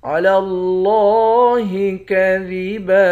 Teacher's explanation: لام کو لفظ اللہ کے لام کے ساتھ ملا کر لفظ اللہ کے لام کو موٹا پڑھیں گے۔ لفظ اللہ کے لام کے اوپر کھڑا زبر ہے، ایک الف کے مقدار کھینچ کر پڑھیں گے۔